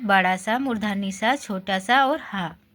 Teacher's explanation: इन व्यंजनों का उच्चारण करते समय वायु के मुख में टकराने से ऊष्मा अर्थात गर्मी उत्पन्न होती है। इसलिए इन व्यंजनों को ऊष्म व्यंजन कहते हैं।